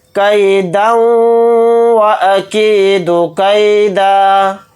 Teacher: دال کے اوپر 2 زبر پڑھے جائیں گے اور دال کو پھر ہم واو کے ساتھ ملا کر پڑھیں گے۔ کیدا واکید کیدا، یعنی دال کے اوپر تنوین ہے، تنوین کے بعد واو آ رہا ہے تو اس میں ادغام بھی کریں گے، یعنی واو پہ تھوڑی دیر آواز کو روک کر ادغام کر کے بھی پڑھیں گے۔